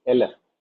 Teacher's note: Elef, not Aleph, it is Elef, meaning 1000. The first syllable is accented, and the first syllable which is accented is carrying an E class vowel.